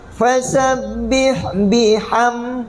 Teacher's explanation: mim mati tak dengung, izhar syafawi